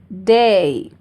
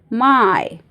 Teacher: नाउ डिप्थों्स are gliding vowels. मतलब जो टंग का पोजीशन है वह ग्लाइड होता है। मूव होता है। एक पोजीशन से दूसरे पोजीशन में। बहुत स्लोली होता है बट इट मूव्स कंटीन्यूअसली। · तो जो फर्स्ट थ्री है वो ई की तरफ ग्लाइड होते हैं। मतलब जब साउंड निकलता है वो ई की तरफ आता है।